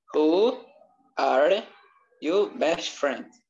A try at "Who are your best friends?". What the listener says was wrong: Ó, não é só you, tem um R aqui. Your, ok?